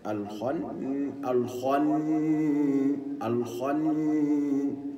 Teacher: ينطق الاثنين نون كانهما نون واحده مع الغنه بمقدار حركتين هكذا الخن الخن الخن الخن الخن مع التشديد على النون لانها